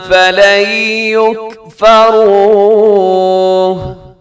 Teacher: فَلَنْ يُكْفَرُوهُ، یہاں ادغام ہوگا، نون ساکن کے بعد یا ہے تو یہاں ادغام ہوگا مع الغنہ